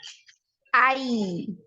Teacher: untuk huruf ya ini tidak ada aliran nafas tapi punya aliran suara